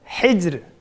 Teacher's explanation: bu yerda ro kichik talaffuz qilindi. Chunki ra sukun, oldimiz sukun, uni oldi zir. Zirga aloqador ahvollarda ra kichik talaffuz qilindi.